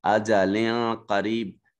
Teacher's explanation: لام منون ہے، لام کے نیچے جو تنوین ہے، اس کے بعد قاف حرف اخفا ہے جو دوسرے کلمہ میں ہے، اور یہ اخفا ہوگا یہاں پر۔